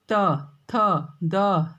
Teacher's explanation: आपकी जीभ दांतों को स्पर्श कर रही है ना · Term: त वर्ग